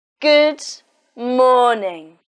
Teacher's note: In this sentence, the stress is on morning, so you say it louder and longer.